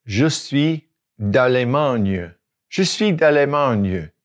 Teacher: de ends with a vowel and Allemagne begins with a vowel. So we combine it and make D apostrophe.